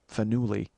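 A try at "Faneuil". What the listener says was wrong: Look, it's Fenel. No, there's no I at the end. It's the I at the end is silent.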